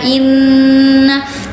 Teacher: Dibacanya dengung. Berapa harakat? Dibacanya dua harakat. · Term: gunah